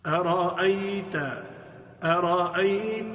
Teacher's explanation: را کو موٹا کر کے پڑھیں گے اس لیے کہ را پر زبر ہے اور حمزہ دونوں جو ہیں وہ باریک پڑھی جائیں گی اور اچھی خوبصورت لطافت کے ساتھ ان کو ادا کریں.